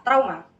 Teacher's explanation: Saat menyebutkan diftong au, vokal yang terlibat harus diucapkan dengan artikulasi yang jelas sebagai a yang diikuti oleh u tanpa jeda.